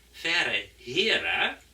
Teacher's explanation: wo Niederländisch und Hochdeutsch und Plattdeutsch runde Vokale haben, hat Friesisch hier auch wieder einen entrundeten Vokal